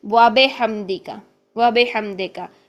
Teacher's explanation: با کی جو زیر ہوتی ہے اس کو مجہول انداز میں پڑھ دیتے ہیں